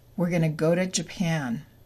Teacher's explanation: To becomes t, but after a vowel sound, it becomes d.